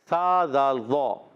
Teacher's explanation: ذال کا مخرج ہے زبان کا سرا اوپر کے دانتوں کے کناروں سے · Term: حرف لسبیہ